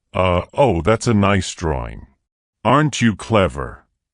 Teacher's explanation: Caretaker talk is often pitched higher and slower than talk used with adults.